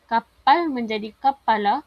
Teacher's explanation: berlaku penambahan suku kata A untuk mematuhi koda dan berlaku germinasi pada konsonan P.